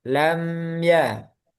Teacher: Ya, jangan lama-lama. Karena kalau lama jadi guna. Jadi ada tambahan guna.